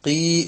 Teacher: കീ എന്ന് നമ്മൾ പറയുന്നതിന്റെ ഒരൽപ്പം ബേക്കോട്ട് ഒന്നുകൂടെ നാവിന്റെ മുരട്ടിലേക്ക് പോയി അത് ആ ചെറുനാക്കിന്റെ അവിടെ തട്ടിക്കഴിഞ്ഞാൽ ഖീ എന്നാവും. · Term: ഖാഫ്